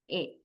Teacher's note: A is in a somewhat upper mid level inside the mouth.